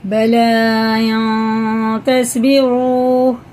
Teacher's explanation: اس کو ہم غنہ کر کے پڑھیں گے. ناک میں لے جا کر 1 الف کے برابر کھینچ کے پڑھنا ہے. اخفا کی مقدار 1 الف ہے.